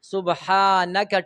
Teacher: سبحانك ټول حروف باریک